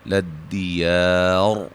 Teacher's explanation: را کو موٹا ادا کریں گے وقف کی صورت میں. ملانے کی صورت میں را باریک ہوگی, اور جب وقف کریں گے تو مد عارض وقفی ہوگی.